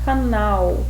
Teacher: canal tem a última sílaba mais forte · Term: sílaba tônica